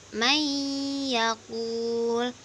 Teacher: dengan meleburkan nun sukun ke huruf berikutnya dan disertai unah 2-3 harokat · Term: Idgham Bighunnah